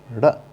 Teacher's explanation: जिनके उच्चारण में जीवा पहले ऊपर उठकर मूर्धा का स्पर्श करे और एकदम झटके से नीचे आए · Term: उत्क्षिप्त